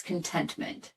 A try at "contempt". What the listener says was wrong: Like contempt. Contentment. You said contentment.